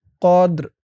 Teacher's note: এখানে অক্ফ করার কারণে উচ্চারণটা কেমন হবে খেয়াল করুন। কদ্র, রর আওয়াজটা লাস্টে একটু ভাসবে। কদ্র, ফি লাইলাতিল কদ্র, ফি লাইলাতিল কদ্র।